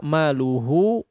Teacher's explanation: kalau maluhu di sini kadar madnya Hanya dua harakat saja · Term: Mad asli